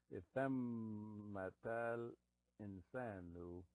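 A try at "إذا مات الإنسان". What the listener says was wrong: Ida. Pause. Mata. Not idam.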